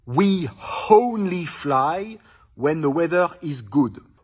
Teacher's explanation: quand le mot précédent se termine par un E, à ce moment-là, on met un Y invisible. Donc par exemple, we only fly when the weather is good.